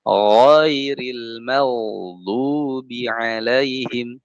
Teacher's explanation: Jangan terbaca ada udara. Ada udara jadi khairil maghdubi.